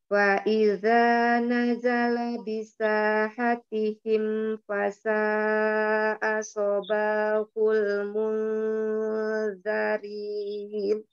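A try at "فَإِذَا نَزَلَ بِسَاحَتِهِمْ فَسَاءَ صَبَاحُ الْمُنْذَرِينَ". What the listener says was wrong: Tebak enggak, cuma pengucapannya kurang. Tuh masih ujung lidahnya kurang aja maju ke Iya, keluar masih seperti Z, tapi enggak apa-apa.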